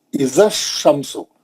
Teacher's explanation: زال کے بعد کا الف نہیں پڑھا جا رہا، اس کے بعد کا الف نہیں پڑھا جا رہا، اس کے بعد کا لام نہیں پڑھا جا رہا. اذا الشمس، لام کے بعد آنے والا حرف شین ہے، شین حروف شمسی ہے.